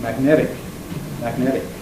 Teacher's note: it's a syllable final te what will Americans do to it therefore voice it tapping it